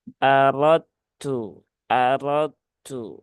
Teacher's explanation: ini idghamnya Kamil ya berarti dalalnya masuk ke ta ya ya dalnya langsung masuk ke huruf ta ya Jadi bukan aradtu tetapi aradu aradu ya jadi langsung ke huruf